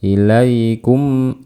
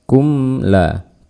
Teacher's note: Ini disebut dengan izhar syafawi. Dibaca dengan jelas mimnya karena dia bersifat gunnah, alirkan sedikit gunnahnya.